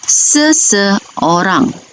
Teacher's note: Jika bunyinya seseorang, bermakna bunyi itu merupakan bunyi vokal tengah, iaitu I pepet